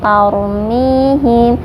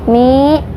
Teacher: Tadi sudah saya jelaskan, ro sukun itu dibaca tebal ketika berhubungan dengan fathah ataupun domah, dibacanya tebal. Tarmihim, mi dibaca panjang 2 harokat karena hukumnya mad tabi'i